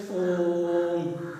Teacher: प्लुत स्वर को जो हम बोलते हैं तो दीर्घ से भी डबल गुना समय लगाते हैं।